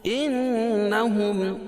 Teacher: نون مشدد اس میں غنہ ہوگا